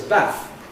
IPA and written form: bæθ (bath)